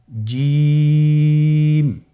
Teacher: জিহ্বার মধ্যখান তার বরাবর উপরে তালুর সঙ্গে লাগিয়ে উচ্চারণ করতে হয়।